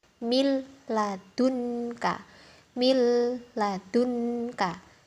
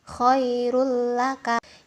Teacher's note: untuk huruf bila gunnah itu la sama ro, masuk tanpa dengung ya teman-teman.